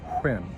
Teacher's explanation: there isn't a place where I can stop saying an H before I say a W, right? It's one sound.